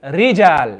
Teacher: you need to cut down that shiva as much as possible so you don't want to read it like the english letter